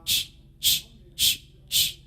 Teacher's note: Any vibration in that? No, there isn't. So that's a voiceless sound.